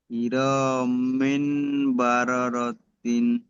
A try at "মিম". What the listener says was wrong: এখানে মিন হবে না, মিম দুজের মিন হয়, আর মিমটা মিমের সাথে যুক্ত হচ্ছে, মিন হবে না, মিম, লাস্টেও মিম হবে।